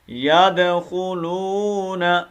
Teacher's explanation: واو مدہ ایک الف کی مقدار میں کھینچیں گے، نون کو لمبا نہیں کرنا. یدخلون یہ نہیں کرنا، یہ غلط ہے، ٹھیک ہے.